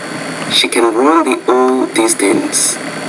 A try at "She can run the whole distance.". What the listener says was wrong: No, this is killing your pronunciation here. This is sentence rhythm again. Now check out this when I say this. Notice when I do this one, I put more stress on the main verb when it's positive.